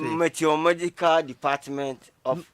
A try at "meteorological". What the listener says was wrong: It's not magical.